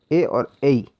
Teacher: ए और ऐ, इनका उच्चारण स्थान कंठ और तालु माना गया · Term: कंठतालु